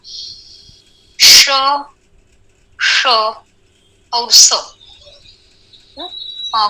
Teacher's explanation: ये सारे वर्ण अघोष है, यानी अघोष यानी वोकल कॉर्ड्स कम वाइब्रेट होते हैं और ये सारे विवृत है।